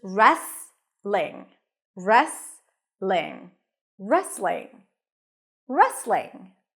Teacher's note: you also don't hear the T so it's just restling · You start with an R sound. There is no W here, okay? Just an R. And then an E sound.